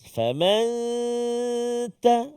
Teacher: Nun mati bertemu dengan huruf ta, maka dengung dua harakat. Faman ta, lidah kita jangan sentuh le langit. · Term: Ikhfa hakiki